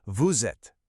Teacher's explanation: When you say vous êtes, you don't say the two words separately. The S at the end of vous actually links up with the A and makes a Z sound. It all blends together to sound like vous êtes. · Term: liaison